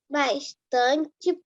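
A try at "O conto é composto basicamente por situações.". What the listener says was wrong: Não está escrito bastante.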